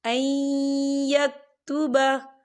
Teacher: या देखिए ऐ, यहाँ नून साकिन है और नून साकिन के बाद जो है या आ रहा है और या जो है रूफ़ यरमलून में से है, तो यहाँ पर इदगाम होगा, थोड़ा सा गुने के साथ पढ़ेंगे।